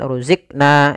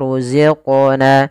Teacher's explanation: Kemudian pada lafal qaf ada bacaan qalqalah. Yaitu suara qafnya dipantulkan. Kesalahan yang terjadi adalah dia tidak memantulkan.